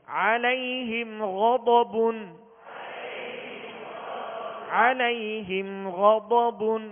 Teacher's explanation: اظہار شفوی، غنہ نہیں کریں گے. غین اور ضاد دونوں حروف مستعلیہ میں سے، لہذا پور یعنی موٹا کر کے پڑھیں گے